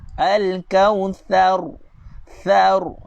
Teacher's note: Sebab huruf tha makhraj dia kena keluarkan lidah.